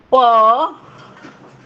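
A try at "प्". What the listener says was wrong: Don't say pa. It is not full pa. It is u, pa, ya, a, ka, a. You have to talk like that, okay?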